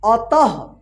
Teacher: देखिए आप अतः कैसे लिखा जाएगा देखिए यहां पे अ तः त के बाद जो है ना ह का उच्चारण हुआ है